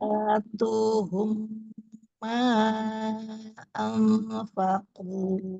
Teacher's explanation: Tu-nya jangan to, tapi tu. Domahnya sempurnakan mencucu.